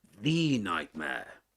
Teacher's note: So he's making emphasis on the word the and so he pronounces it as such the the nightmare.